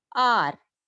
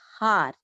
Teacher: H is silent here. That's why we are getting vowel sound. R, not har.